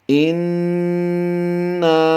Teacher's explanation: हमज़ा नून ज़ेर इन, नून अलिफ ज़बरना, इन्ना। यानी हमने नून मुशद्दिद होने की वजह से गुन्ना तो किया है, साथ में हमने नून को बाद में खींच भी दिया है। उसकी वजह ये है अलिफ से पहले हरफ नून पर ज़बर है तो ये अलिफ मद्दा बन गया।